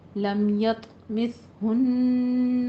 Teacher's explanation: لم میں اظہار شفوی، یط طا کے پر قلقلہ ہے، مثہن غنہ واجبہ